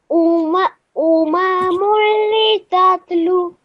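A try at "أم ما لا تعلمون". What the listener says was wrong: So, bit more a longer lu sound.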